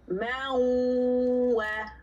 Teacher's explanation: We blend the noon sakin into the wow by way of shadda when we give idgham with the wow. And we say, ma'wa. · We don't go anywhere near the noon. We go straight to the wow